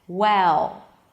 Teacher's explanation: I could bring the tip of the tongue up, listen, well, but only at the end, only after I create this nice tense sound, and then I bring the tip of the tongue up. So the dark L actually affects the vowel before the L